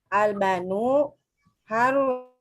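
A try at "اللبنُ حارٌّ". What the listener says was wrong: Ulangi bacanya, ini la-nya ada 2. Nah, al-labanu al-labanu harun.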